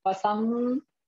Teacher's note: नासिका से अनुस्वार का उच्चारण करना है। पसंग गौ अलग पढ़े, गौ फिर दोनों को जोड़ के पढ़े।